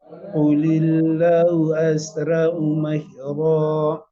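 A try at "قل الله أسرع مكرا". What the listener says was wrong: Qulillahu, lamnya dibaca panjang.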